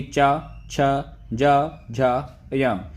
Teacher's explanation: जिन वर्णों का उच्चारण करने पर जीभ का मध्य भाग तालु को स्पर्श करता है उन्हें हम तालव्य व्यंजन कहते हैं। इसको तालव्य को हम साथ साथ में स्पर्श और संघर्षी व्यंजन भी कहा जाता है, जैसे कि चा, छ, जा, झा, या।